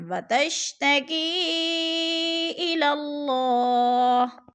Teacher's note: وتشتکی الی اللہ، وتشتکی حروف مدہ کے بعد حمزہ دوسرے کلمے میں ہے تو ادھر کیا ہے، مد منفصل ہے، 4 الفی مد ہے، 4 حرکات کے برابر ہم نے اس کو لمبا کر کے پڑھنا ہے